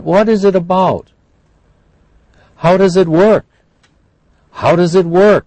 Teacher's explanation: they have a declining uh intonation at the end because we want a factual answer